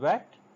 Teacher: you will feel that the back of the tongue raises to the velum, but they do not come too much close.